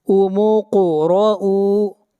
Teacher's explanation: قاف کے اوپر قلقلہ ہوگا، آواز کو ہلائیں گے